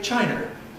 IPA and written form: ˈʧaɪnɚ (China)